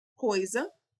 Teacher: o I é semivogal, porque o O tem mais força